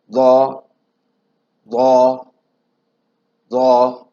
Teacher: تو ضا کا جو مخرج ہے وہ وہی مخرج ہے جو ثا اور ذال کا تھا، کہ زبان کی نوک اوپر کے سامنے والے دانتوں کے جب سرے سے ٹکرائے گی تو ضا ادا ہوگا۔